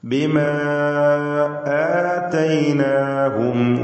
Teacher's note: ഇതിലുള്ള അലിഫിന് മദ്ദ് മുൻഫസിൽ ജായിസ് നൽകി നാലോ അഞ്ചോ ഹറക്കത്തിൻ്റെ അളവിൽ ദീർഘിപ്പിക്കൽ അനുവദനീയമാണ്.